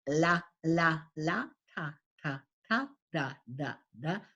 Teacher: So instead of putting it where it needs to be placed, the tip of the tongue needs to be placed in the front roof of the mouth, the alveolar ridge